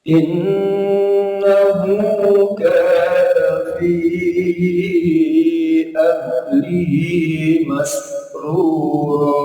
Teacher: Innahu, in bisa minimal 2 ketukan sampai 3 ketukan. Non tasdid termasuk ghunnah isyaddah, dengung yang sangat. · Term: ghunnah musyaddah